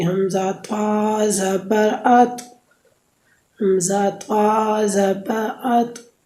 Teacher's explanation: زبان کی نوک جب اوپر کے اگلے دونوں دانتوں کی جڑ کی طرف والے آدھے حصے سے لگے تو اس سے طا ادا ہوگی